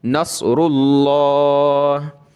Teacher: لفظ اللہ سے پہلے را پر پیش ہے تو لفظ اللہ کو موٹا کریں گے